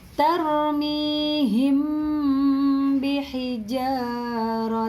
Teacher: Di sini juga ada mim sukun atau mim mati bertemu dengan ba yang bacanya disamarkan disertai dengan dengung. Mimnya masuk ke dalam ba, disamarkan ke huruf ba. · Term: ikhfa syafawi